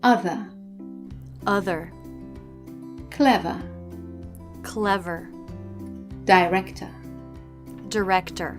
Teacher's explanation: we also drop the letter R at the end of words in British English